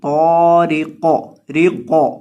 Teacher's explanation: جب قاف ساکن ہو تو اس کو ہلا کر پڑھا جاتا ہے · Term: کلکلا